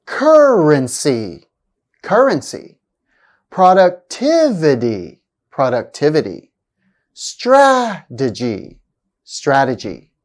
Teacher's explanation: have stress on the third syllable from the end